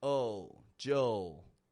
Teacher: the D and the U are still making that blended kind of Jill sound, followed by a dark L. Oh, Joel. In the British accent.